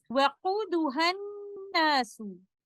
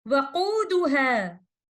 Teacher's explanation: upon stopping, we will recite the first word by giving the 2 counts of maddu tabi'i at the end of the word like this: waquduha.